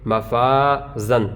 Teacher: الف سے پہلے فا جو ہے یہ باریک حروف میں سے ہے، لہذا یہاں پر الف کو باریک پڑھیں گے